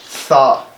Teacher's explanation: सा हमने सीटी की आवाज़ बिल्कुल भी नहीं निकलने देनी, मुंह से हमारी हवा निकलेगी।